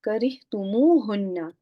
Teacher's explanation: When hunna got attached, this extra vowel was inserted between the two words.